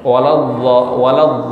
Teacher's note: Berarti kan kayak mendekati dha. Ada keluar anginnya dikit.